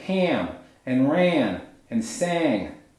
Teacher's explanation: produced with the back of the tongue actually raised higher and pushed more forward in the mouth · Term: tensed sound